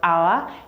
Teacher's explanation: For instance, you have hour. When you pronounce the word hour, you're going to see that the H there is silent